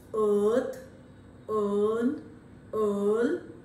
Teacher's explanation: it in word like in this case again you find that it stands midway between half open and half close and a central vowel · it stands midway between half open and half close, and a central vowel and an example of a neutral vowel, because the lips are undisturbed or unperturbed, they are not put into any shape. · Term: long sound